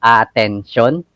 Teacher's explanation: for us filipinos we don't have a shoe sound but we can make the shoe sound if we combine s and y